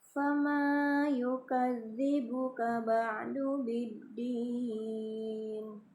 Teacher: Yukadzibu, zal bertasdid, tekan. Kemudian ba'du biddin, dal bertasdid juga ditekan ya.